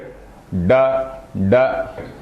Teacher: I'm taking the tongue up so it is a retroflex word where the tongue takes a Twist and then it touches the say the upper portion of the